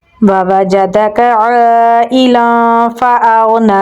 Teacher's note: हमज़ा को गईन के साथ मिलाएंगे। गईन को पुर यानी मोटा पढ़ेंगे। नून पे खड़ी ज़बर है तो इसे हम लंबा पढ़ेंगे